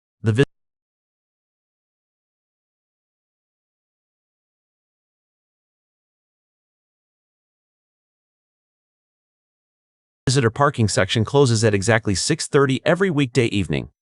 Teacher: use a strong falling intonation on exactly 6:30 to emphasize the deadline and ensure you don't drop the C in closes.